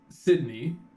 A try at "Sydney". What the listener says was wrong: You said it weird. You said it like Sid's knee.